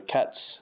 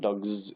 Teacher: So cats is with an S sound and dogs is with a Z sound.